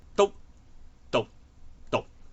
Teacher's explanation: 我哋就會將▁NG▁嘅尾音變成▁K▁嘅尾音，所以就會有篤、讀、讀